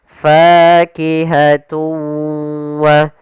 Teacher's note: suara tanwinnya kita masukkan langsung ke huruf wau dan kemudian kita tahan gunahnya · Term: idgam ghunah